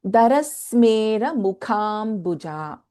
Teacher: इन मुखा ख इज महाप्राणा